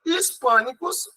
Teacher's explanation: Hispânicos é proparoxítona, é a antepenúltima